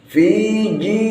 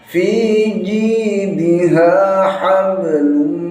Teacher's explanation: Fi jimnya nggak boleh keluar desis.